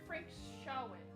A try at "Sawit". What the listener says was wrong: Sawit. It can't be Shawit. The S, the H is not in front of the S, it's in front of the A, so it's like Sawit. Frank Sawit.